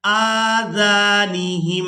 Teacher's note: अन यफ़क़हूहु वफ़ी आज़ानिहिम, हमजा को खड़ी ज़बर की वजह से और जाल को अलिफ मद्दा की वजह से खींच कर अदा करेंगे।